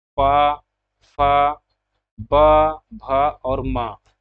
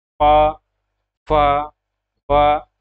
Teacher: प फ ब भ और म, इसका उच्चारण जो है ओष्ठ से होता है। जब हम मुख से इसका उच्चारण करते हैं तो हमारी जीभ जो है वह ओठ को टच करता है, जैसे कि इस डायग्राम में हम देख लेते हैं ओष्ठ के माध्यम से।